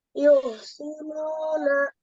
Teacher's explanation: Nu-nya dipanjangkan karena ada waw sukun ya